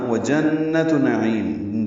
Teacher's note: ادغام ناقص ہے، دونوں جگہ ملا کے ہی پڑھنا ہے، یہاں پہ نہیں رکنا. وجنت نعیم، جیم کو نون سے ملائیں گے، غنہ ہوگا، نون مشدد ہے اس لیے، اور نون پر زبر ہے، یاد رکھیں یہاں پہ کھڑا زبر نہیں ہے، جنات نہیں ہے، وجنت نعیم.